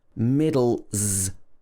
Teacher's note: In the middle, it's got z.